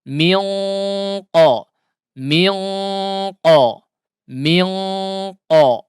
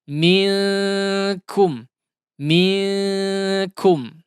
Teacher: Huruf qaf itu memiliki sifat yang tebal, adapun kaf di antara huruf-huruf yang tipis sehingga bunyi suaranya pun akan berbeda ketika diikhfakan.